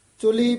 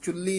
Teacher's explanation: ਚੁਲੀ ਪੋਲਾ ਹੀ ਉਚਾਰਨ ਕਰਨਾ ਚੁੱਲੀ ਨਹੀਂ ਕਹਿਣਾ ਹੈ